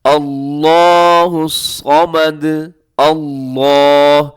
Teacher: لفظ اللہ موٹا پڑھا جائے گا، کیونکہ لفظ اللہ کے لام سے پہلے حمزہ کے اوپر زبر ہے۔ اللہ الصمد، صاد کو موٹا پڑھنا ہے، اس کو باریک نہیں کرنا۔